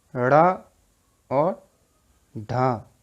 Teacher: जब हम उच्चारण करते हैं तो जीभ ऊपर उठकर झटके के साथ नीचे आती है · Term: उच्छिप्त